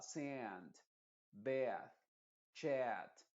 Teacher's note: es una vocal A que se pronuncia en la parte de adelante de la boca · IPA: /æ/